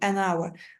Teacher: Bunun oxunuşunda birinci hərfimiz düşür.